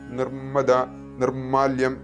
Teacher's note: വ്യഞ്ജനാക്ഷരം വരുമ്പോൾ നി വിസർഗം കഴിഞ്ഞിട്ട് ഇർ വരും എന്നൊക്കെ കണ്ടതാണ് അപ്പോ അതുകൊണ്ടുതന്നെ മ എന്നുള്ളത് ദിത്വമായിട്ടാണ് ഉച്ചരിക്കേണ്ടത് നിർമ്മദ എന്നിങ്ങനെ ഉച്ചരിക്കണം